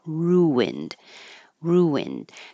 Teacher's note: And this is one of those words that has a intrusive W or I call it um an invisible W or sometimes a hidden W. Um, when your lips go from a rounded sound like ooh to an unrounded sound like I ru ruined, then a w should appear naturally